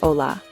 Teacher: the h is silent, so we say hola